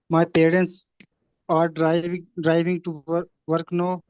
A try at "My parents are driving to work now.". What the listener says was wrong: Very good, बेहतरीन।